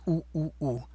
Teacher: It's U, U, U without the Y sound in front of it.